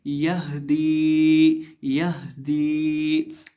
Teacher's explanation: एक ये दो आंखों वाली हा होती है, इसको हम हलक के आखिरी हिस्से से अदा करते हैं जो सीने के साथ मुत्तसिल है · हम दाल को यहाँ एक अलिफ के बराबर खींच के पढ़ेंगे, लंबा करके पढ़ेंगे क्योंकि दाल के साथ या मद्दा है।